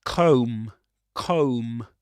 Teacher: You don't pronounce the final b.